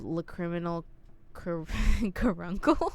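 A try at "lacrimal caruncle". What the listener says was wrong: Lacrimal, not lacriminal. lacrimal. Lacrimal Lacrimal.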